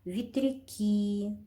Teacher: Ветряки. Ударение падает на И.